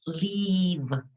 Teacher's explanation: your mouth is going to be uh um your your yes like making a smile it's going to be tense leave and the sound at the end is with your lip